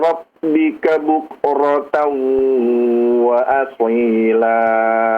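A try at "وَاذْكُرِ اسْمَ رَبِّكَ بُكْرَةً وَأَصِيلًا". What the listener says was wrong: Khususnya zalnya ya. Zal silakan dialirkan suaranya. Wadhku.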